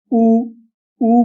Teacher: जब हम ऊ ऊ कहते हैं तो होठ गोल होते हैं